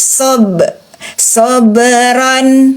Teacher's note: Sob, huruf ba sukun, qalqalah. Huruf ba ketika dia sukun qalqalah.